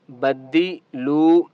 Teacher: لام کو ایک الف کی مقدار کھینچ کر پڑھیں گے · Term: واو مدہ